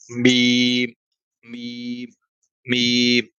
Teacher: یہ میم ہونٹوں کے ذریعے سے ہوتے ہیں تو یہ بیرونی ہونٹ کے حصے سے اس کی ادائیگی ہوتی ہے